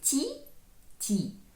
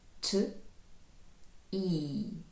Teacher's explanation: Якщо українцю так і хочеться при з'єднанні звуків т і і сказати ті, ті, то англієць каже ть і, не з'єднуючи їх між собою. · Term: приголосні не пом'якшують